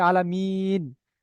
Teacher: হরফে মাদ্দার পরে যদি আমরা থাকি, তাহলে হরফে মাদ্দার পরে যদি আমরা থামি ওয়াকফ করে আয়াত করি, তাকে আমরা বলবো মাদ্দে আরজি ওয়াকফি। মাদ্দে আরজি ওয়াকফিকে আমরা 3 থেকে 4 পরিমাণ টান দিয়ে পড়বো।